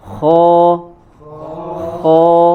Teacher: kalau fathah dan dhammah jelas huruf kho ini harus dibaca tebal ya, karena dia termasuk huruf isti'la.